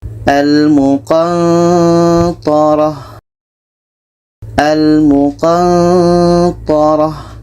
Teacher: Ketika sebut huruf nun, kita merasakan huruf ta. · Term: ikhfa hakiki